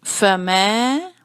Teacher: پھر ہے میں، میم پر ہے زبر اور اس کے بعد الف آ رہا ہے تو زبر کی آواز تھوڑی سی لمبی ہو جائے گی